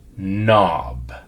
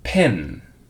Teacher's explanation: you can almost feel the sound coming out your nose